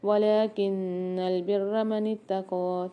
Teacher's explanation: تا کو باریک پڑھیں گے اور قاف کو موٹا پڑھیں گے